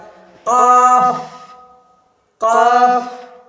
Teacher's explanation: उसके बाद है ये काफ, है ना, बड़ी काफ का, इसको नुक्ता वाला है, हलक से अदा होगा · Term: नुक्ता वाला काफ